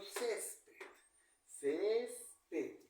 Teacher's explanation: la mayor fuerza de voz está en la penúltima sílaba si lleva tilde Porque esa palabra No termina ni en N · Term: graves